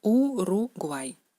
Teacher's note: En ruso es la letra U, siempre da el sonido U, ni I, ni Y, ninguna otra cosa, es el sonido U puro.